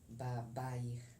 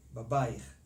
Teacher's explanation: The accent is on the second ba.